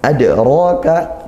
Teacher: Adraka, nah ini ada yaitu dal sukun qalqalah sughra dikuatkan, dalnya adraka ya, dipantulkan ya. Ra ini mad tabi'i, ra-nya fathah, maka juga dia tafkhim karena ra-nya fathah. Selain itu dia juga panjang 1 alif mad tabi'i ya, atau 2 harokat panjangnya.